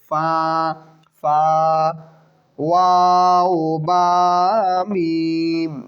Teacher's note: 2 ঠোঁটের খালি জায়গা হইতে উচ্চারিত হয় এটা। মানে এই 3টা হরফ উচ্চারণ করতে গেলে কোনো দাঁতের ব্যবহার হয় না, জিহ্বার ব্যবহার হয় না।